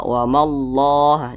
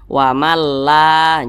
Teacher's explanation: hurufnya itu memiliki tanda tanda baca fathah atau tanda baca dah maka kalimat Allah dibaca tebal dibaca tafkhim